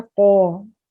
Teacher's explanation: जुबान की जड़ और ऊपर का तालु के साथ ही मिलकर अदा होता है, यानी कौवा जो होता है, ठीक है, वहां से हर्फ अदा होता है।